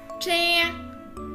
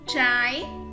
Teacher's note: khi đọc âm Chờ chúng ta cong lưỡi lên nhé